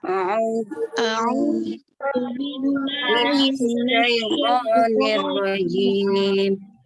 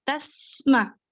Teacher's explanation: Tasma, di situ ada sin sukun. Sin sukun itu ada sifat namanya hamas. Jadi harus jelas hamasnya.